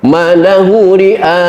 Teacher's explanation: Malahu ri'a, mad wajib muntasil, harus 6 harokat.